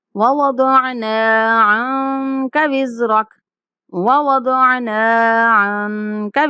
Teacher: عَنْكَ نون کے اوپر اخفا کرنا ہے